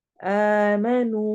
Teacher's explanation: वाव सेकंड से पहले जब भी पेश आती है, दोम्मा आती है, तो हम वाव को दो हरका लंबा करते हैं, उतना ही लंबा करते हैं जितना कि हम उल्टी पेश को कर रहे होते हैं। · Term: वाव मद्दा